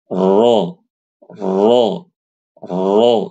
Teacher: ro itu dibaca tafkhim ketika dia berharakat fathah ya dibaca tafkhim dibaca tebal cara bacanya dengan menaikkan pangkal lidah